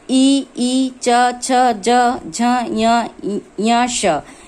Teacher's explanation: ये हमारे तालु भाग को स्पर्श करते हैं, यानी जीभ को स्पर्श करते हैं।